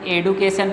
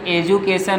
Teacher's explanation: प्रोसीजर डी के बाद यू आता है तो उसको ज पढ़ते हैं कभी कभी, हमेशा नहीं पढ़ते।